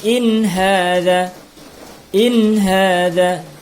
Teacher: Ya, tidak ditahan tapi ditekan saja suara nunnya. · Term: izhar